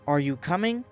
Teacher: Voice rises on coming.